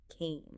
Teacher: The past simple came has a clear long a sound like in game or name.